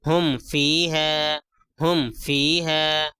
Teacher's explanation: یہاں پہ دیکھیے میم ساکن ہے، میم ساکن کے بعد فا آیا ہے، میم ساکن کے بعد فا آیا ہے تو کیا ہے، میم کی آواز کو ناک میں نہیں چھپائیں گے۔ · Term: اظہار شفوی